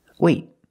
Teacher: I stop the air with my tongue in the T position.